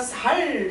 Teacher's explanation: 쌀 이런 거를 전라도 사람, 경상도 사람이 읽으라 그러면 살 이러거든